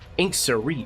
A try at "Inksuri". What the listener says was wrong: Not that much emphasis on the OR.